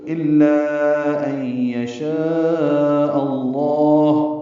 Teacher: تو یہ یشاء کا جو حمزہ ہے وہ لام اسم جلالہ سے ملے گا، لام اسم جلالہ کو پر پڑھیں گے